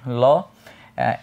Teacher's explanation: এটার কারণ হচ্ছে আমাদের জিভের ডগা, যেটা জিভের ডগা আপনার যখন দাঁতের মধ্যে স্পর্শ করে, ল, দাঁতের মূলেও স্পর্শ করে যখন আবার তার নিজের জায়গায় ফিরে আসে, তখন পাশ দিয়ে জিভের দুইটা বাতাস বের হয়ে যায় দুই পাশ দিয়ে, তো সেই জন্য এটাকে পার্শ্বিক ব্যঞ্জন ধ্বনি বলে হচ্ছে অ্যাড্রেস করা হয়।